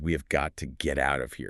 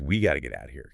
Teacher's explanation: Got to morphs into gotta, and out of slides right into outa.